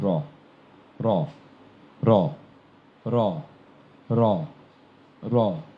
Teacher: এটি উচ্চারণের সময় দাঁতের গোড়ায়, উপরের তালুর শেষ প্রান্ত অর্থাৎ দাঁতের গোড়ায় হালকা করে বাড়ি গিয়ে র উচ্চারিত হয়। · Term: বয় বিন্দু র